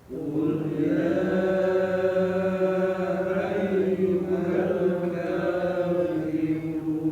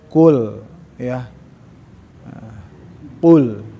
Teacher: Jadi lisan huruf qaf yang ada di lidah ujung dengan hampir mendekat kepada huruf qalqalah, memang huruf qalqalah ke tenggorokan, ya. Qaf bukan huruf tenggorokan walaupun nyeklok, tapi huruf lisan, huruf lidah.